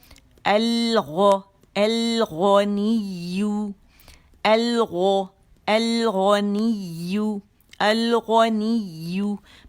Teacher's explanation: मुँह बारीक, गैन मोटा, कहाँ जाएंगे, हमारी ज़बान की जड़ कहाँ जाएगी, ऊपर जाके नरम तालु की तरफ उठ जाएगी, और गैन जो मोटा अदा होगा